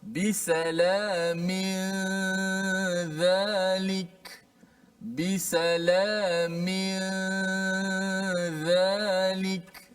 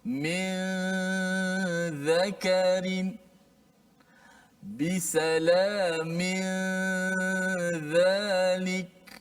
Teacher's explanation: Tapi yang penting selepas kita sebut mim itu terus kita pindah pada makhraj huruf ikhfa iaitu huruf zal. Nun itu hanya kekal di khayshum sahaja. Adapun di lidah, di makhraj kita dah sembunyikan dia, kita terus pindah daripada huruf sebelum nun itu kepada huruf ikhfa. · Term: ikhfa hakiki